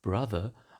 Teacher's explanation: many words like brother are written with a short O but pronounced with a strut vowel.